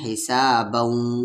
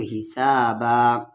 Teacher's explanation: نہیں رکنے کی صورت میں حسابوں، اور رک رہے ہیں تو حسابا